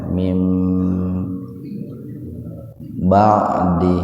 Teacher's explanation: Mim iklab, ada nun mati ketemu dengan ba. Iklab itu terbalik gitu ya. Jadi dibacanya itu bunyinya itu m ya,